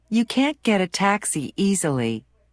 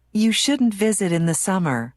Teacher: Notice how the T in can't and shouldn't is not strongly pronounced.